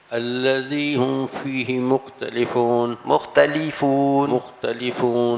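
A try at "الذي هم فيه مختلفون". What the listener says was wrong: جلدی پڑھیں یا آہستہ پڑھیں، لام زیر لی پڑھنا ہے، لام زیر لے نہیں پڑھنا.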